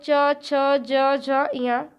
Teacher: च, छ, ज, झ, ञ, इसको हम तालु से बोलते हैं, तो इसका उच्चारण स्थान हो गया तालु। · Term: चा वर्ग